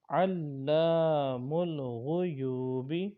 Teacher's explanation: إنك أنت علام الغیوب، علام الغیوب نہیں پڑھنا بلکہ لام کو الف کے ساتھ ملا کے لمبا کریں گے